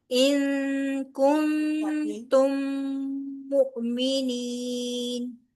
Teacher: मीम के बाद मीम आ रहा है लिहाजा यहां पर भी गुना होगा इदगाम बिल गुना होगा · ان نون ساکن کے بعد کاف ہے لہٰذا اخفا ہوگا · میم کے بعد میم کا ادغام ہو رہا ہے، ادغام شفوی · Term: इदगाम शफवी